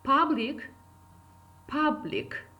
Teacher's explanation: the word public is two syllables word so first syllable is stressed